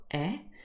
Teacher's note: an open mid front unrounded vowel sound